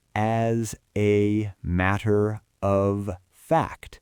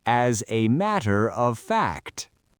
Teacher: We push the S from as onto the a. The a becomes a schwa, a z.